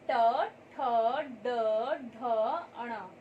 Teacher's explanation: इनका उच्चारण करते समय हमारी जीवा दांतों के आगे कठोर वाले हिस्से को स्पर्श करती है, तो इसलिए इसे मूर्धा वर्ग भी कहा जाता है।